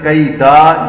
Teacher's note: دال کے اوپر تو صرف زبر ہے اور اس کو ہم لمبا نہیں پڑھ سکتے